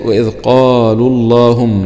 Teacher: هنا اللام في اسم الجلالة مفخمة ، وجاء قبل لام اسم الجلالة حرف ساكن وهو الواو المادي،